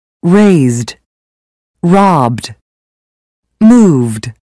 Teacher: All other consonants are voiced. The ed ending for verbs that end with voiced consonants has a d sound.